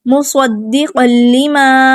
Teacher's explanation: مصدق لما، دال بھی مشدد ہے، حروف کلکلہ میں سے مشدد ہے، تو جماعوں کے ساتھ ادا کریں گے. قاف کی تنوین کو ہم لام کے اندر مکس کر دیں گے